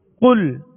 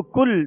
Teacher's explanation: اس کو کل باریک نہیں پڑھیں گے بلکہ پر پڑھیں گے، موٹا پڑھیں گے